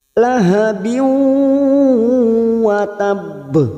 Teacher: Nun, mim, ya, waw. Masuk dan mendengung. Masuk pada huruf depannya yaitu huruf waw. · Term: idgham bi gunnah